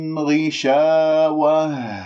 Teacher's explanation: لما تقف بالتاء المربوطة تقف بها، والهاء باهتزاز الأوتار الصوتية